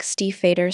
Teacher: The IE combination creates a long E sound similar to see. Also, pay attention to the V which is pronounced like an F.